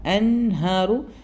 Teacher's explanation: നൂന് സുക്കൂന് ശേഷം ഹാ വരുന്ന അവിടെ ഇദ്ഹാറാണ് അതുകൊണ്ട് നൂന് മണിക്കരുത്